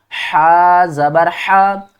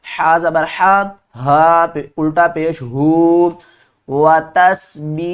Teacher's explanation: حا کو ہم نے حلقے درمیان والے حصے سے نکالنا ہے، یہ حروف حلقی ہے.